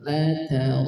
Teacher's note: Kemudian ayat yang ke-6, la tarawun, la tara, di sini diperhatikan la dengan ta dibaca tipis, la ta tipis. Kemudian huruf ra dibaca tebal karena ra fathah, ra dalam kondisi fathah maka dibaca tebal.